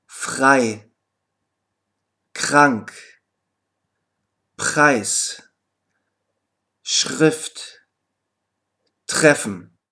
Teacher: er kann am Silben Anfang jedoch auch wie ein ausgesprochen werden wenn es auf einen stimmlosen Konsonanten folgt in diesem Falle überträgt sich die Stimmlosigkeit auf das R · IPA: [x]